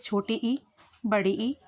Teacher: अग्र स्वर जीभ के आगे वाले हिस्से से बोले जाते हैं।